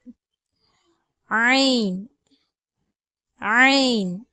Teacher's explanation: தொண்டையினுடைய நடுப்பகுதியிலிருந்து ஐன் என்ற உச்சரிப்பு வந்து பிறக்கிறது